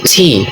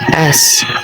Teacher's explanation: the letter T is made by stopping the airflow at the front of the mouth, while S is made by forcing air through the narrow passage